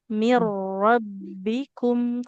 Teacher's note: rnya dia harus lebih tebal, Bu. Mirbikum karena rnya dia berharakat fathah